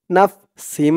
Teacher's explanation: তানবিনের পরে ইদগামে বাগুন্নার চার হরফের এক হরফ মিম আসছে তাসদিদ সহকারে তাই এখানে এই তানবিন টাকে গুন্নার সহিত মিলাইয়া পড়তে হবে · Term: ঈদগামে বাগুন্নাহ